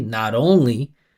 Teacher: The pitch goes up and down, the vibration continues, T turns into D, and I go back into the next vowel. Not only, like that. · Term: flap T